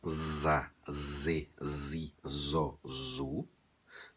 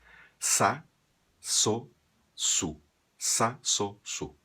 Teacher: nos países sulamericanos de fala espanhola eles fazem como se fosse uma s ou uma cedilha · A letra Z, ela nunca vai soar sonora em espanhol como soa em português. Esse som que a gente diz que é da abelha, za, z, zi, zo, zu, nunca ocorre em espanhol.